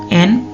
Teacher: Udara diarahkan melalui hidung dengan ujung lidah menyentuh belakang gigi atas